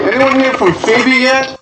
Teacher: this is a yes no question so our pitch is going up towards the end that's common for yes no questions so we have a couple